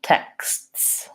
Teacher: even more difficult plural texts then I have to say so 3 unvoiced consonants there in the end